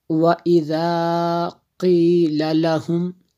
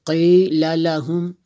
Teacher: قی ہمیشہ اور ہر حالت میں اس کو پر پڑھیں گے